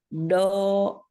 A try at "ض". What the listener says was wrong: Kalau do itu masih pakai ujung lidah, Bunyinya terdengarnya masih dengan ujung lidah.